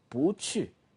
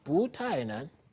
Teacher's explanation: if the coming syllable is from the fourth tone, like 去, in this case, 不 becomes 不, second tone.